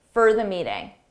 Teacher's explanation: for when it's unstressed, more of a reduced sound, a quick sound, it sounds like for the meeting.